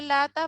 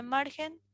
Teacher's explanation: sílaba tónica se sitúa en la penúltima sílaba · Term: llana